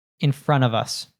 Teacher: of would reduce to a schwa and sometimes it keeps the Vivo but we can also drop